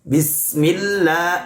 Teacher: Bismillahirrahmanirrahim. Nah, ketika melafalkan sin, maka betul-betul tipiskan sin.